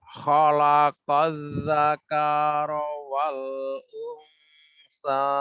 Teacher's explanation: Unsanya ikhfa'nya ditahan 2 harokat.